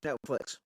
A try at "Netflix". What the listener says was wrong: Nilflix? You said Nilflix at first.